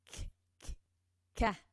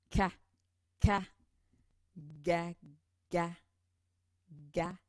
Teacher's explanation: Ensuite, on a reculé un petit peu notre langue derrière les dents. Et ici, c'est le dos de la langue, donc la langue, qui va aller frapper l'arrière du palais.